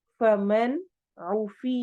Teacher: فمن نون واضح ہوگا چونکہ آگے عین آ رہا ہے، اظہار ہو رہا ہے یہاں پہ. عوفیہ عین حروف حلقی میں سے ہے.